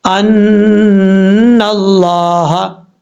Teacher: نون کے اوپر شد غنہ کریں گے 1 الف کی مقدار